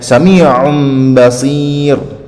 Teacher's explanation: So ya nun berubah menjadi mim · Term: iklab